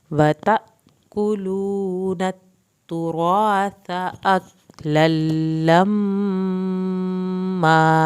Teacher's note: لما, الف جب ملے گا کاف سے, آپ نے کاف کو ہلانا نہیں ہے. لما, یہاں پر لام کی شد بھی ادا ہوگی اور میم کی شد پہ ایک الف کے برابر دیر لگے گی